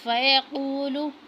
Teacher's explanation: قوف کو موٹا پڑھنا ہے